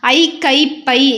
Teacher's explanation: ஐ கை பை இந்த மாதிரி தனித்து ஒலித்ததுனா அது தன்னுடைய முழுசா இரண்டு மாத்திரை அளவுல ஒலிக்கக்கூடியது